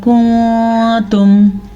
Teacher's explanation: یہاں پہ اخفا کا قاعدہ ہو رہا ہے نون ساکن کے بعد تا حروف اخفا میں سے آنے کی وجہ سے